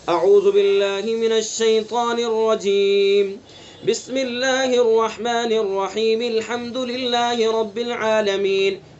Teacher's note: تیسرا فصل اول وصل ثانی، یعنی اعوذ باللہ من الشیطان الرجیم پر رکیں گے، فصل کریں گے، وقف کریں گے اور بسم اللہ کو سورت سے ملائیں گے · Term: قف وصل